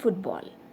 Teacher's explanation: in football foot okay the stress is on foot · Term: compound words